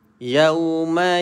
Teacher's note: bunyi dia lin dan mulut kita kena muncung sikit.